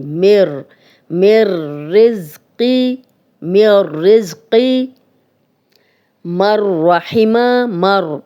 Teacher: مِر رِزْقٍ مِر رِزْقِ اب مر اب دیکھیں نون ساکن ہے اور آگے را پہ شد آ گئی ہے تو شد والا حرف ہمیشہ پچھلے زیر زبر پیش کے ساتھ ملا کے پڑھا جاتا ہے تو پیچھے کہاں میم پہ زیر ہے جزم والی نون کی ذرا سی بھی آواز نہیں آئے گی